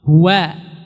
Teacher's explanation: Maka di sini jangan jadi huwa Allah, tapi huwa dibuka wanya.